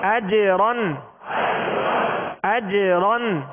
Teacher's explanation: جیم پر سکون ہے، جزم ہے، کیا کریں گے؟ جیم پر قلقلہ کریں گے، اور قلقلہ کا معنی ہے جنبش، لوٹتی ہوئی آواز کو قلقلہ کہتے